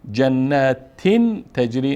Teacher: نون اینجا تنوین اظهار نمی کنیم، نون ساکن نمی کنیم، اینجا اخفا هست